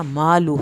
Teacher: لام کی پیش کو نہیں کھینچنا، ہاں الٹا پیش کھینچی جائے گی